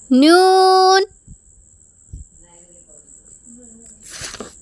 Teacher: നാവിൻ്റെ പുച്ഛവും മുൻപല്ലുകളുടെ ഊന്നും ഉപയോഗിച്ചു കൊണ്ടാണ് നൂൻ എന്ന അക്ഷരത്തെ പുറപ്പെടുവിക്കുന്നത്.